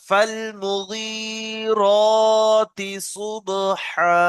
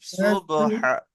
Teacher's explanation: তিটা টান হবে না, ফাল মুগীরাতি সুবহা, হাটা টান হবে শেষে একালিফ